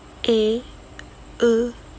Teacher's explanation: vokal Madya atau Tengah yang dibentuk apabila rahang bawah menjauh sedikit dari rahang atas